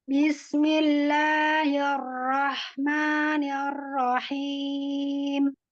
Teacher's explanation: Jadi ro karena di sini ro tasdid jadi tebalkan lagi.